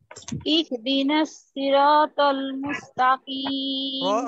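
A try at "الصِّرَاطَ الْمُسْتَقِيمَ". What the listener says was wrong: রটা আরো মোটা করেন। সিরাতাল। কদ কাসরা সি মোটা হবে, কাসরা আছে যদিও কিন্তু মোটা করতে হবে। রটাও মোটা হবে, তটাও মোটা হবে।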